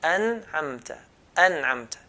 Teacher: with idhar letters, the noon has to sound clear. We have to hear the noon sound.